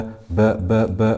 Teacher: Because we're stopping on it, we've made it sakina. So we do qalqala wusta.